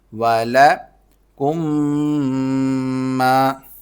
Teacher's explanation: اور میم پر جب تشدید ہوتی ہے تو اس پر غنہ کیا جاتا ہے، ناک میں آواز پیدا کی جاتی ہے